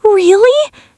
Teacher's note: High pitch, full of shock and disbelief. · Your tone is going to be high and breathless.